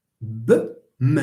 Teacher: So both of them are voiced. Both of them are bilabial.